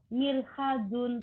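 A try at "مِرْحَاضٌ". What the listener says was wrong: Mirhadun hanya panjang ya.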